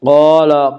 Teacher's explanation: قاف کو پر پڑھیں گے، قاف حروف مستعلیہ میں سے ہے